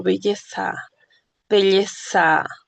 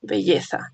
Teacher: Esta es la Z, ¿no? Que es interdental y fricativa, como cuando digo belleza, belleza, ¿ok? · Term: sonido de la Z